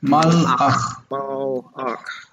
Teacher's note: you need to stop after the lamed. So it's not malach, but mal, stop, ach.